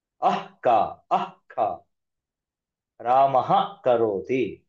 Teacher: ಅದೇ ರೀತಿ ಬರೀತೀವಿ ಅದನ್ನ ಬರೆದು ಕ ಬರೀತೀವಿ ಅದು ವಿಸರ್ಗ ಹೌದು ಆದರೆ ಕ ಮುಂದೆ ಇರೋದ್ರಿಂದ ಅದನ್ನ ಅರ್ಧ ವಿಸರ್ಗದ ರೀತಿ ಪ್ರೊನೌನ್ಸ್ ಮಾಡಬೇಕು